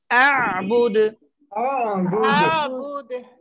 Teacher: أعبد প্রথমে হামজা, তারপরে আইন। হামজাটা হচ্ছে কণ্ঠনালীর শুরু থেকে উচ্চারণ করে সাথে সাথে আইনের সুকুন কণ্ঠনালীর মাঝখানে চাপ দিতে হবে।